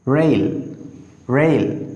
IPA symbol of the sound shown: eɪ